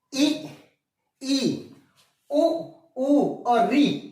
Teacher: जिनके उच्चारण में जीभ का अगला भाग तालु को टच कर ले, इसलिए जीभ कम खुलेगा, मुख बिल्कुल कम खुलेगा, उन्हें कहेंगे संवृत स्वर।